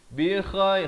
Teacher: Yuwajjihhu la ya'ti bi khairin, idhar halqi. Bi khair, kha di hujung kerongkong. Bi khairin, jelaskan saja jangan panjang, tanwin yang selari.